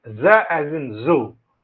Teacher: Voiced, the vocal cords vibrate. Alveolar, that is the tip of the tongue is the active articulator, the teeth ridge is the passive articulator. Fricative, that is, it is produced with a nature of close approximation. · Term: voiced alveolar fricative